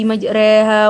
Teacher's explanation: Kemiringannya sekitar 80% dari fathah dan 20% dari kasroh, sehingga suaranya lebih condong ke huruf E atau bervokal E, dan bunyinya terjadi antara fathah dan kasroh. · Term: bacaan imalah